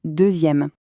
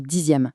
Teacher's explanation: le x devient z pour faire une jolie liaison plus fluide entre les voyelles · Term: son z